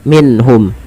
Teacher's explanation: bacaan izhar nah izhar di sini izhar bukanzh syafawi yaitu adanya nun sukun bertemu dengan ha cara membacanya itu diperjelas suara nunnya